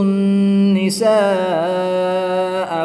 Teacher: الف مدہ کے بعد حمزہ اسی کلمے میں ہے تو یہاں پر مد متصل ہوگی، 3 سے 5 الف تک کھینچ کر پڑھیں گے۔